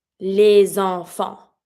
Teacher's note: Every time that we connect in French with something that is the S or the X, we're going to see, we're always going to link it with a Z sound